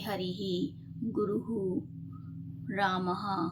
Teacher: संस्कृत में विसर्ग का बहुत महत्व होता है। इसका उच्चारण हकारवत होता है।